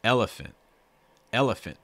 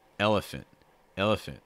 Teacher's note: stress that first syllable really heavy the other syllables you can be a lot more relaxed and stay faster